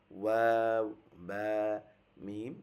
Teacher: 15 নম্বর মাখরাজ মুখের ঠোঁটের দুই ঠোঁটের মধ্যস্থান থেকে ওয়াও, বা, মিম উচ্চারণ হয়